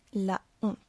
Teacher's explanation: Le mot honte nous oblige à prononcer le A de la. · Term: H est aspiré